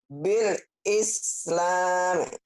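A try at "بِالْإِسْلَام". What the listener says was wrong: Bil Islam. Dihentikannya ujungnya ya Bu ya. Jangan diislami. Kalau baca Quran dihentikan. Jadi sukun.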